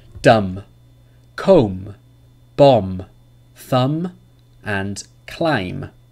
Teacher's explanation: there is no B sound in any of these words